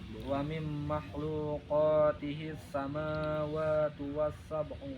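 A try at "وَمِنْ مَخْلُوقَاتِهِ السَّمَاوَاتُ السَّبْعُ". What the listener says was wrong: samawati sab'u enggak pakai wa.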